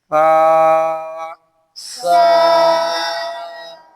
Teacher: जुबान की हल्की सी नोक जो है वो बाहर निकल जाएगी और जुबान का सिरा दांतों के किनारे के साथ लग जाएगा।